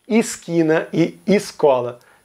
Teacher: todo mundo reduz o E para I